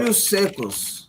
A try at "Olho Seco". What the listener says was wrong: Olho Seco, no, just one. Olho Seco, singular. Olho Seco.